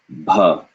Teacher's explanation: a b sound with air lots of air coming out